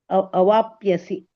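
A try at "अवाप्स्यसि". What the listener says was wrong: ಸ ಇದೆ ಮಾತಾಜಿ ಒತ್ತು ಕೆಳಗಡೆ. ಪ ಸ ಹೇಳ್ಬೇಕು.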